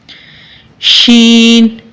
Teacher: वस्त जुबान और बिल मुकाबल ऊपर का तालू